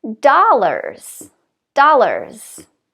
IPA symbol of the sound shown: a